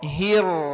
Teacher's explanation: Bismillahirrahmanirrahim, tebalkan, ngambekkan ro-nya, hir.